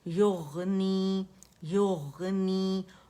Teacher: رخاوہ اور موٹا بھی استعالہ بھی ہے